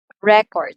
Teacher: So the first syllable receives the first stress since it's a noun. So mas malakas siyang sabihin or i-utter as compared to the second syllable.